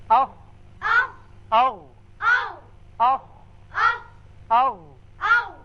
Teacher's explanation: دونوں مخارج میں آواز حلق کے اوپر والے حصے میں جا کر رکی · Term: اقصی حلق